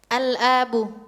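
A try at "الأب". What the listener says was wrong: La. Laisa bil mad. Al-hamzah laisa bil mad. Iqra'i maratan ukhra.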